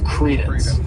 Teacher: this word has two syllables and the stress is on that first syllable